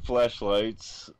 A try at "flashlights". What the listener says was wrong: you're going to have to enunciate the A on that and not make it sound like a e please